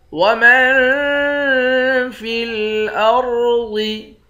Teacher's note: میم کو نون کے ساتھ ملا کر یہاں اخفا کریں گے، را اور ضاد دونوں کو موٹا پڑھیں گے۔